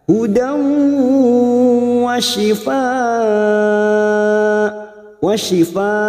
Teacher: fathatain yang bertemu waw idgham bi gunnah, siap masuk dan mendengung. Masuk pada huruf waw, hudaw ditahan selama 3 harokat